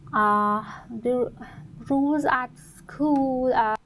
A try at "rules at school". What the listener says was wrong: She has a bit of trouble with the R. You can see there's a bit of pain trying to get rules at school, and the U sound, rule, school. So a little bit of effort from the candidate to produce those sounds, so not full control.